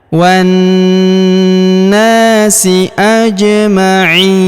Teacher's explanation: huruf ja berharokat sukun kita pantulkan atau kita qalqalahkan. Ajma'in, huruf i kita panjangkan 2, 4 atau 6 harokat karena di depan huruf i terdapat ya sukun sebelum huruf pemberhentian, dan huruf pemberhentian huruf na kita sukunkan atau kita matikan.